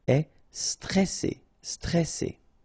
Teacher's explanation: here you get this E before the double S, so it will open the pronunciation of the E